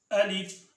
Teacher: الف منہ کے خالی حصے سے ادا ہوتا ہے